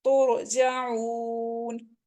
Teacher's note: را ساکن سے پہلے پیش آ رہی ہے تو ہم اس کو موٹا پڑھیں گے